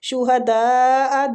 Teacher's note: دال کے اوپر جو مد ہے یہ مد واجب متصل ہو رہی ہے، اس کو کھینچنے کی مقدار 4 حرکات ہے